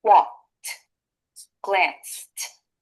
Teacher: In walked and glanced, the e d makes a t sound.